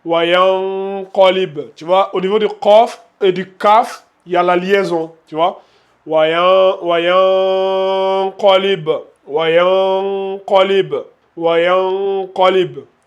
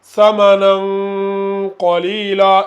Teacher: Tu vois, au niveau du qaf et du kaf, il y a la liaison.